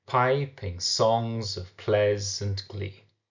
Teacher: the meter we have seems to be one stressed followed by one unstressed syllable